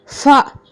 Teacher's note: நம்மளுடைய மேல் வரிசையோட பல்லு கீ உதட்டை டச் பண்ணும்போது என்ன எழுத்து வெளியாகும்னா ஃபா